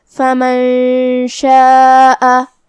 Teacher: کلا انہا تذکرہ فمن شاء ذکرہ، فمن شاء यहाँ नून साकिन है, फिर हर्फ शीन है। शीन हुरूफ इख्फा में से है, तो हमें ये हुक्म को गुन्ना के साथ अदा करना है। फमन शाअ, कलिमत शाअ में यहाँ मद है, यह मद वाजिब मुत्तसिल है, तो हम अपनी आवाज़ 4 मद के बराबर लंबी करेंगे।